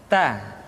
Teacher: Keluar dengan menyentuhkan ujung lidah kita dengan gusi-gusi gigi seri bagian atas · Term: huruf Ta